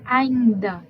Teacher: A gente está escutando um A, ainda. Então, a gente está escutando o A, o I está nasalizado e o DA que você está escutando normalmente